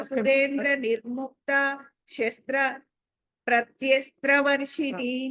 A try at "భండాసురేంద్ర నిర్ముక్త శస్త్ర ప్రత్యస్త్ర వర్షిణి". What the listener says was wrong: ఇప్పుడు నిర్ముక్త దగ్గర దీర్ఘం తీశారు మళ్ళీ ఇంకొకసారి చదవండి.